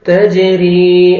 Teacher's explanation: را کو 1 سیکنڈ کھینچنا ہے یا مد ہے اور را کے نیچے کسرہ ہے را کو باریک بھی کرنا ہے · جیم قلقلہ کریں گے ڈبل ساؤنڈ آئے گا